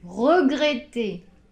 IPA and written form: rəgrεte (regretter)